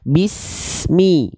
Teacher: lafalkan Bismi tanpa adanya pantulan Bismi bukan bis semi oke nah itu beberapa hal yang teman-teman